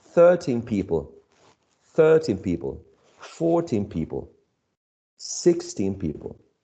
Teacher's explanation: we shift the stress of 13 towards the first syllable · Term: stress shifts